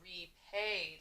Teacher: notice how I hear long A in the middle. Repaid. I don't hear an E.